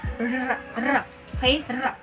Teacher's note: it is a voiced alveolar approximant wherein the sound produced when the tongue touches the alveolar ridge, but it is not too close.